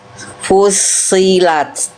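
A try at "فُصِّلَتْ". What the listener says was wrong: Angkat lagi sedikit pangkal lidahnya. Fusli. Fusilat.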